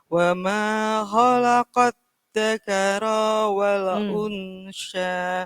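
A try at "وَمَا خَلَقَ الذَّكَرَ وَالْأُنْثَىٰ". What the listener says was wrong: Khalaqad dzakara wal. Unsa digigit. Beda dengan sya. Kalau tha digigit.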